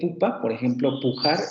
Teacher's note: el primero sería el posterior cerrado labializado, la U de pupa, por ejemplo, pujar, en donde no aparece nasal ni nada, va esa U normalita.